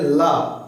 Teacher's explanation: पार्श्व व्यंजन कहंगे जैसे क्या है ल जब आप बोलेंगे तो ल जीभ के बगल से क्या निकल जाएगी हवा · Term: पार्श्विक व्यंजन